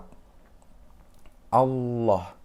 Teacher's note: Adalah biasanya disebut juga sebagai lam mufakhomah atau ya lam tebal. Adalah harus membaca huruf lam pada lafadz Allah itu dengan tebal, yaitu dengan cara mengangkat lidah dan menekannya ke langit-langit atas sambil menekan suara yang cukup kuat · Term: lam tafkhim